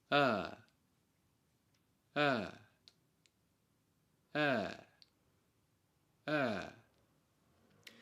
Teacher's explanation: kernel So, the first mid-vowel sound, the /ə/, has two accepted standard without r-coloring. /ə/ The tip of your tongue is relaxed behind and touching the lower teeth. The sound is free and forward.